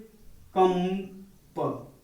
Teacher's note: इसका उच्चारण करते समय हम केवल नाक का प्रयोग करते हैं, मुंह का प्रयोग नहीं होता है। और यह जो है सदैव जो है स्वर के बाद आते हैं।